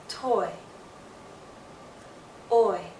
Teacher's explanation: you'll see a more open position move into a more closed position. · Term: diphthong